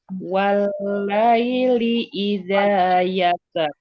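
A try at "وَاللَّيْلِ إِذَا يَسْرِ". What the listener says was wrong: Jangan begitu. Sin yang mengalir dulu. Walaili idza yassar. Ya, mengalir dulu, jangan yasar. Yasar. Yassar. Yassar.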